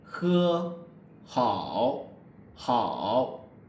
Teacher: the back part of the tongue doesn't really touch the soft palate. So it's, you can feel it isn't touching your kind of soft palate, and ge, ke is kind of, you're touching it. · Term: fricative sound